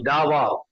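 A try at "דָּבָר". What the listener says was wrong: Very good. Davar. Super.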